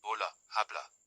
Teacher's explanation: The letter h is silent in Spanish